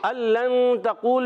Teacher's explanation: نون کو چھپا کر ادا کریں گے، غنہ کریں گے ایک الف کا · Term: اخفا